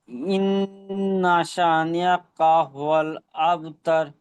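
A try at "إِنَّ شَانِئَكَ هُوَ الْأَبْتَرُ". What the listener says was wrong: ইন্না শা, সিনটি আলিফ মাত্র একালিফ টান দিয়ে পড়তে হবে, তো আপনার একালিফ হয়নি, একটু কম হয়েছে। ইন্না শা, বলেন।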